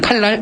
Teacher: 자, 유음이 아닌 게 유음을 만나서 유음으로 변하는 현상인데 이게 다시 정리하자면 니은이 리을을 만나서 리을로 변하는 현상이라고 할 수 있는 거지. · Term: 유음화